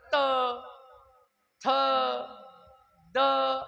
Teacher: दंत्य आहेत ना दात दाताने जीभ टेकून राहिली